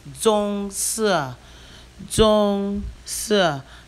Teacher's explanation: Zhong is the first tone, si is the fourth tone.